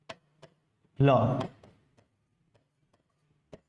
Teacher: ल का उच्चारण स्थान क्या है? दंत